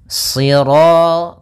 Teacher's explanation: pangkal lidah kita terangkat dan melekat karena dia huruf idbaq